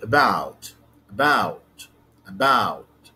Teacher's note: it's composed of two syllables the first syllable is schwa